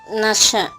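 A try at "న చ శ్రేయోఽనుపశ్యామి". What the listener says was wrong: నశ కాదు నస కాదు నచ చ నచ ఆ చుక్కల్లో చంద్రుడు చెమ్మ చెక్క ఈ చ రావాలి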